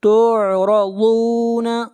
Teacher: ضاد کو موٹا پڑھیں گے، ضاد حروف مستعلیہ میں سے ہے